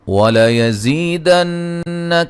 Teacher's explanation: نون مشدد پہ غنہ ضروری ہے